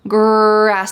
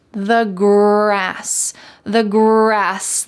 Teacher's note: in American English, we often call this the colored R because it's very strong